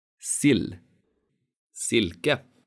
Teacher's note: These words have a short vowel I and a long consonant L.